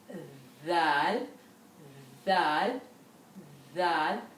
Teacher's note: the front of the tongue touches the upper front teeth. Dal, at the same time, your tongue is curved in the middle.